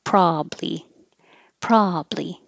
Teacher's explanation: Or you can drop the middle ba and just have two syllables